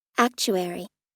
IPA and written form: ˈæktʃuˌɛri (actuary)